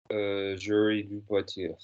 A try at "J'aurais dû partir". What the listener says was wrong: You said like you're trying to say jury, like jury service or something. Say for me, j'aurais dû